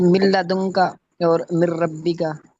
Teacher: اس میں ادغام تو ہے، غنہ نہیں ہے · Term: ادغام بلا غنہ